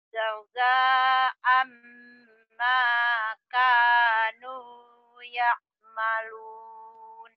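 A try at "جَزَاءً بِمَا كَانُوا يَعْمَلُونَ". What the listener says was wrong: Jazaa'an bimanya ketinggalan tadi ya. Jazaa'an bima kanu, bima kanu ya'malun.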